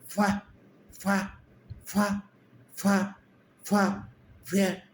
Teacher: इसके अंदर नीचे वाला होठ और नीचे वाला जो दांत है उनका काम है, ऊपर वाला हिल नहीं रहा